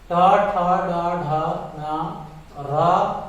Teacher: इन वर्णों को मूर्धन्य कहा जाता है, क्योंकि इनका उच्चारण मूर्धा की सहायता से किया जाता है।